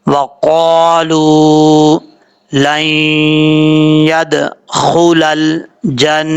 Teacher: خا حروف مستعلیہ میں سے ہے، پر پڑھا جائے گا، دال حروف قلقلہ میں سے ہے، یہاں پہ قلقلہ ہوگا، اور جب لام کو یا سے کنیکٹ کریں گے تو یہاں پہ ادغام یرملون کا غنہ ہوگا، ایک الف کی مقدار۔